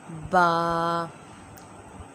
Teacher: یہ دونوں ہونٹوں کے تر حصے سے ادا ہوتا ہے۔ تر حصہ مطلب دونوں ہونٹوں کا جو گیلا حصہ ہوتا ہے وہاں سے ادا ہوتا ہے با۔